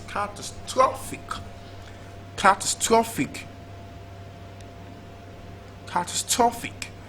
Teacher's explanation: Is it stressed on the first syllable and we have catastrophic, or second syllable and we have catastrophic, and third syllable we have catastrophic, or last syllable and we have catastrophic? Now the word is usually stressed on the third syllable, so it's catastrophic, catastrophic, catastrophic.